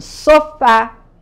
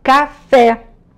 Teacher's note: a palavra café tem a última sílaba mais forte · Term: oxítonas